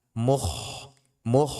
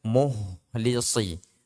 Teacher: harus tetap di ujung tenggorokan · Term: kha